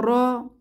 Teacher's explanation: র ফাতহা র র এই হরফটির একটি বৈশিষ্ট্য বা সিফাত হলো এই হরফটি মাখরাজ থেকে উচ্চারণের সময় একটু কম্পনের সৃষ্টি হয় যেমন জিহবার আগারতে একটু কম্পনের সৃষ্টি